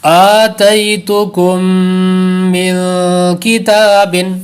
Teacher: تئی کو لمبا نہیں کریں گے کیونکہ یہاں پر یا لین ہے، تو یا لین پر تو لمبا نہیں ہوتا، اس لیے لمبا نہیں کریں گے لیکن دو غنے کریں گے. آتیتکم من کتاب، دونوں غنوں کو برابر رکھیں.